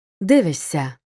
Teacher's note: у дієслівних буквосполученнях пишемо шся але вимовляємо с свистячі перед шиплячими завжди стають теж шиплячими с вимовляємо як ш